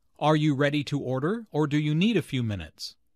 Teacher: The word or signals a choice here. Notice the rising intonation on order and the falling intonation on minutes.